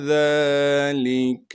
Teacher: ذال کو باریک کر کے نرم کر کے پڑھنا ہے · ذال پر کڑا زبر ہونے کی وجہ سے ذال کو ایک الف کے مقدار کھینچیں گے